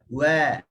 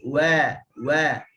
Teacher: bibir atas dengan bibir bawah dia berfungsi sekali lah untuk menyebut huruf waw. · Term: Makhraj syafatain, dua bibir